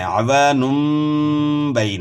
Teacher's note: عوانم، یعنی نون کی بجائے نم پڑھنا ہے، تو یہاں اقلاب کا مطلب ہے کہ یہاں ہم نے نون کی آواز میم سے تبدیل کرنی ہے، نون کی آواز میم سے تبدیل کرنی ہے اور غنہ بھی کرنا ہے۔